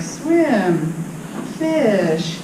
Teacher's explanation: you could imagine there's like periods after each one, and there's more of a break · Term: phrase boundary